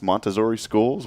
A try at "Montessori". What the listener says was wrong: You still got that Z in there. No, you said Montessori.